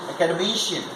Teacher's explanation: the fourth syllable is being stressed